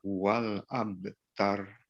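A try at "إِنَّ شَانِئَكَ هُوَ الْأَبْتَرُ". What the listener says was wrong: Iya, sudah bagus keduanya, namun nunnya masih terpanjangkan. Jangan dia panjang 2 harakat, tapi 1 harakat. Innasya, jangan innasya. Innasya langsung.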